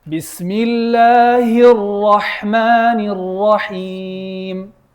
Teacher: When we say Bismillahir Rahmanir Rahim, try to put shadda on the ra.